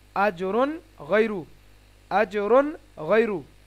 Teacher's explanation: তানবিনের পরে এখানে গয় এসেছে, তাহলে এটা হুরুফে হালকি, ঠিক আছে, সে কারণে এখানে ইজহার হবে, তাড়াতাড়ি স্পষ্ট করে পড়তে হবে।